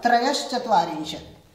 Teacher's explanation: जैसे मैंने 33 में बताया था, त्रयश यहां च को देखते हुए विसर्ग का श बनेगा, तालव्य श